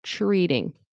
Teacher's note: notice tr I pronounce it as ch. Ch. with an R.